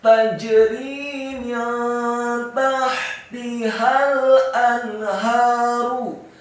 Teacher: Kata anharu, alif atau hamzahnya dibaca tipis, fathah satu harokat. Kemudian nun yang sukun bertemu dengan huruf ha yang tafkhim. Hukum bacaannya adalah ilhar halqi